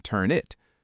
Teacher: the N and the I blend together in turn it